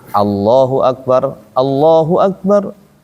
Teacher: Kalau dikasih harakat hamzah a dia tipis berarti bacanya a.